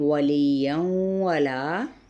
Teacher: ادغام مع الغنہ کا قاعدہ، کیونکہ تنوین زبر کے بعد واو متحرک ہے